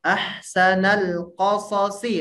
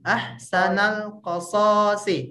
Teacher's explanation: untuk qasasi itu tidak ada yang panjang ya. Jadi Ibu tidak perlu menyeret si shad yang pertamanya.